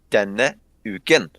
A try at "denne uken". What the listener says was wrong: Why are you making an N sound? Where's the fucking N?